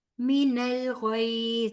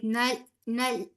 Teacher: لام کا مخرج چھوڑنا ہے اور غین کا پکڑنا ہے. نل نہیں کہنا، ٹھیک ہے، ہلانا نہیں ہے.